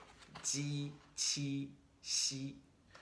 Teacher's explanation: They're produced with the tip of your tongue behind your bottom teeth, and the blade of your tongue is what's making some connection with your hard palate.